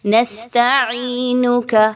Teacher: سین سیٹی کی آواز کو لائیں گے۔ عینک، عین یا زیر عی، 1 سے 2 الف کے برابر یا مدہ کی ادائیگی۔